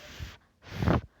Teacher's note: can you feel the vibration when you say f f no we cannot so it is unvoiced